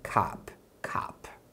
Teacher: No inglês americano, geralmente você vai ouvir mais aberto, mais como um a. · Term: som de a